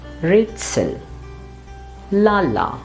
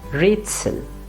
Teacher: as you see the first part is a little louder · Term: stress